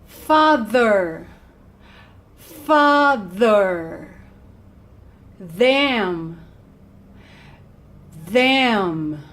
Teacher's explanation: it's called voiced right here you go father father them them the vocal cords vibrate